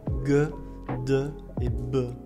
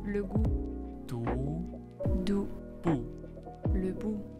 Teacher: Alors qu'en français, ces consonnes, elles sont vocalisées. Ça veut dire que quand vous les prononcez, vous devez faire vibrer vos cordes vocales. Donc en français, ça sera vraiment ge, de et be.